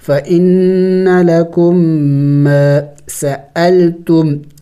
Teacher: میم مشدد ہے غنہ بھی کریں گے · جب میم ساکن کے بعد دوسرا میم متحرک آ جائے تو پھر اس سکون والے میم کو نہیں پڑھنا ہوتا ہے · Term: ادغام